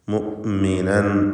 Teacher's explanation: ഹംസ ഷിദ്ദത്തിൻ്റെ ഹർഫാണ്. മുഅ്മിനൻ എന്ന് വ്യക്തമായി ഹംസ ഉച്ചരിക്കുക.